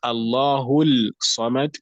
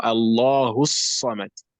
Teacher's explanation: that lam is not pronounced, but the sod is immediately pronounced with the shadda